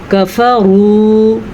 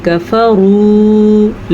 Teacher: را کو پر پڑھیں گے اور واو مدہ کی وجہ سے کھینچ کے پڑھیں گے